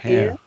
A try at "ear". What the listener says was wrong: no. That sounds like hair, although I don't have any hair. Or it sounds like the big rabbit called a hare, a lièvre. So you need to say ear.